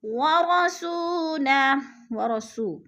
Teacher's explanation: وہ ساکن سے پہلے سین کے اوپر پیش ہے تو اس کو بھی ہم نے لمبا کر کے پڑھنا ہے کیونکہ حروف مدہ ہے، وہ مدہ۔ اور لہو الٹا پیش وقف کی صورت میں ہم نے اس کو ساکن کر کے پڑھنا ہے۔